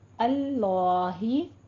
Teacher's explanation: अल्लाही इसमें जलाला है, पुर पढ़ेंगे